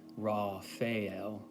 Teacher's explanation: But if you read from Donald Michael Craig's book, Modern Magic, which I've highly recommended on this channel before, he says to pronounce it Raphael, with an emphasis on the L, the last syllable